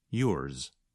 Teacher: So the sound of Z is not as strong or as long as in a word like zero. Instead, it's more like a Z with a little S at the end